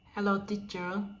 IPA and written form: həˈloʊ ˈtitʃər, (Hello teacher)